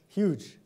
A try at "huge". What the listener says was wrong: More of a U in it.